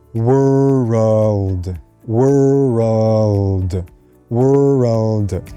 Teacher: order to make this word a little bit easier is actually add a little bit of a after the r sound